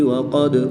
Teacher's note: دال حروف قلقلہ میں سے ہے، اور جب حروف قلقلہ ساکن ہو تو ان میں قلقلہ خوب ظاہر کریں گے